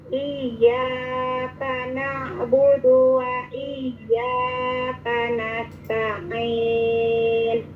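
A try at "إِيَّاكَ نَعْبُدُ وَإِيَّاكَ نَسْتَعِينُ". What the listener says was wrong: Iya, itu cukup 2 harokat ya, jangan kepanjangan. Iyyaka nah itu kepanjangan ya, cukup 2 harokat. Iyyaka na'budu wa iyyaka nasta'in.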